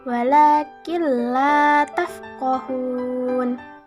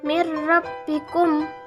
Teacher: Jadi, hukum bacaan idgham bila gunnah adalah ketika nun sukun atau tanwin bertemu dengan salah satu dua huruf ini. Nah, dengan cara membacanya itu tidak disertai dengung